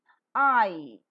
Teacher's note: The RPI is a glide from A to E, and so the glide begins from the front unrounded vowel just above the half open position and moves to centralized front unrounded vowel just above the half closed position.